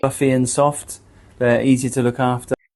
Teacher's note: the vowel u in to becomes a weaker a schwa, and the t sounds softer. Because when a British speaker says the phrase easy to in fast or casual speech, the pronunciation is often reduced for fluency.